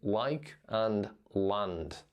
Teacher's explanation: our L's are also a little bit darker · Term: dark L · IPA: [ɫ]